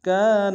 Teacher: الف مدہ ہے ایک انتہا میں کھینچیں گے